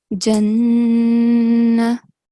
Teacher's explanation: So don't say Jannah, because it seems like there is a vertical fatha here. But make sure that you make the nasal sound for 2 seconds. So Jannah. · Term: Nun Gunna